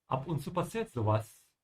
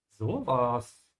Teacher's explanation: when it's not sarcastic or you're not being surprised, you don't stretch the O.